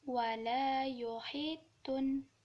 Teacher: apabila ya sukun bertemu kasrah maka panjangnya Hanya dua harokat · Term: Mad Thobi'i